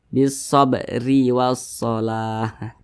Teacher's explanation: Kemudian huruf ro dibaca tipis, dibaca tarkik karena dia berharokat kasroh. Bisabri wassalah, tipis ya.